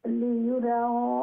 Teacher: ইউ যে ইয়া পেশ ইউ, সেটাকে আরো একটু তাড়াতাড়ি উচ্চারণ করতে হবে।